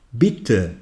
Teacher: bitte se prononce en mettant l'accent sur la première syllabe.